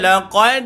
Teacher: Jumpa dengan dal, berlaku bacaan qalqalah, lantunan tuan-tuan.